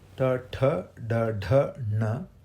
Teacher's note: Palatal is Ch, Ch, J, J, Ñ, which is where we touch the roof with the tongue. Cerebrals is T, T, D, D, N, which is when the tongue bends over, rolls over.